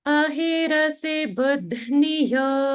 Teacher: the bu in buddhniyo is also a lower swara.